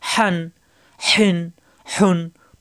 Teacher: হা দুই জবর হান, কণ্ঠনালীর মাঝখানে চাপ সৃষ্টি হবে, ফ্যাস ফাঁস আওয়াজ হবে গরম বাতাসের সাহায্যে।